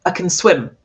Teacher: If I say can when it's positive, you hardly hear it.